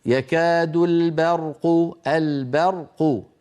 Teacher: لابد من ترقيق الباء وتفخيم الراء